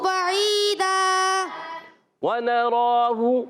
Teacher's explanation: اچھا, پچھلی آیت سے اگر ہم ملاتے ہیں نا تو بعیداً ادغام مع الغنہ کا قاعدہ ہوگا. تنوین کے بعد واو آ رہا ہے عرف ارملون میں سے, اس کو کہتے ہیں ادغام مع الغنہ